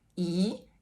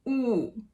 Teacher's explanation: they make very different sounds because one is fronted e and one is backed ooh